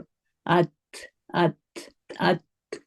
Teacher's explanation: زبان جو ہے، زبان کی ٹپ آف دا ٹنگ جو ہے وہ اوپر کے تالو سے ٹچ ہو رہی ہے نا، اوپر کے جو دانت ہیں اس کے کناروں سے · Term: مخرج